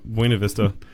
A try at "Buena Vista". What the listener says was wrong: Putting the accent. You're putting the accent on the wrong syllable.